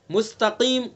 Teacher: قاف کو پر پڑھیں گے چونکہ حروف مستعلیہ میں سے